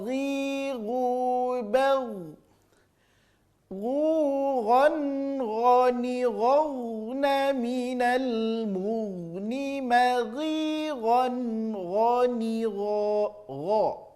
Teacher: Terasa di ujung tenggorokan keluarnya, tapi lebih lembut saja bunyinya daripada huruf kha. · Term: huruf gha